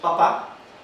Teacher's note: es oclusiva, bilabial, sorda con aire pulmonar agresivo. Ese es el nombre técnico de este sonido.